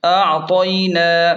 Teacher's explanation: نون پر کھڑا زبر ہے تو اسے 1 الف کے برابر کھینچیں